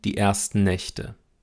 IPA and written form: diˌʔɛɐ̯stn̩ˈnɛçtə (die ersten Nächte)